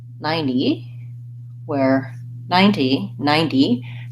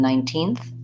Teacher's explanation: ninety 90 has first syllable stress versus 19th has second syllable stress